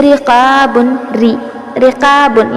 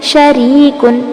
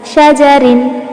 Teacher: را کے نیچے زیر یا 2 زیر ہو تو اس حالت میں را کو ہم باریک پڑھتے ہیں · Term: را باریک